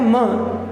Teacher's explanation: प वर्ग का उच्चारण स्थान ओष्ठ है, तो म का उच्चारण स्थान ओष्ठ भी है और नासिका भी है।